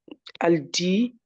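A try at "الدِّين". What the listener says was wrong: Alors, pourquoi tu dis El Dia? Ah. Ou- Moi, je vois pas de fatha ici. Juste là, c'est juste, juste ne prononce pas le lemme.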